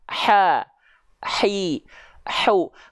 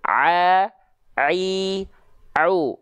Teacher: kalau Ain dilafalkan enggak pakai nafas a a au kalau Ain bocor nafasnya jadinya ha ha hi hi huu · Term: ha kecil